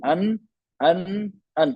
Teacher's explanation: vocal cord को ध्यान दीजिए, आराम से खुली हुई है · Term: हमजा